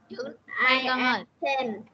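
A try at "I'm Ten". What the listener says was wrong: Từ này mình có đọc là I am không? Mình đọc là gì?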